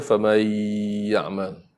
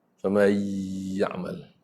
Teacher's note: anda baca Idham Al-Ghunnah, tak ada ghunnah